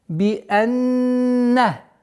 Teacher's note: Здесь у нас назализация в размере 2 огласовок, полноценная назализация.